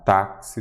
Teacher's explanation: A sílaba tônica é a penúltima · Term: paroxítona